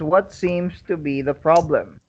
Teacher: you notice the intonation falls at the end